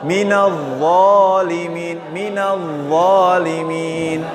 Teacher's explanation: Ujung lidah bertemu dengan ujung gigi atas. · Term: huruf dha